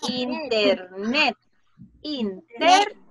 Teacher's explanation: La última sílaba es una sílaba tónica.